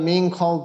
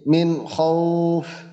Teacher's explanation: এখানে আমরা মিং বলতেছি না, কারণ ইজহারের একটা হরফ খ, এই খ হরফটা নুন সাকিনের পরে আছে, এর কারণে আমরা মিং খৌফ বলতেছি না, বলতেছি মিন খৌফ।